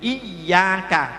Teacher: jangan sampai ujungnya ke atas nanti berbau za